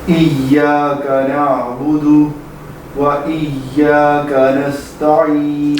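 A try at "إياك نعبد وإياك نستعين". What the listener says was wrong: ہاں سانس نہیں توڑیں گے, بس نعبدو کو لمبا نہیں کریں گے, ساتھ ہی وہ پڑھیں گے لیکن سانس توڑے بغیر, لمبا کیے بغیر. ایاک نعبد و ایاک نستعین.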